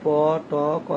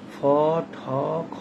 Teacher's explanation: আর যদি পি টি কে এর উচ্চারণ ফ ঠ খ এর মত হয় সেগুলোকে আমরা এসপিরেটেড সাউন্ডস বলি